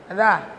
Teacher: Za itu ujung lidah sentuh belakang gigi atas ta. Za. Atau ujung lidah menyentuh ujung gigi seri atas ta.